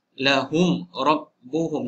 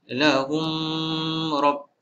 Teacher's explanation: Mim mati bertemu ro izhar syafawi tidak dibaca panjang.